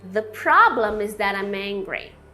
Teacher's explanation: Então começa a prestar atenção aí no som do M final, encosta os lábios, que isso também faz toda a diferença na sua pronúncia.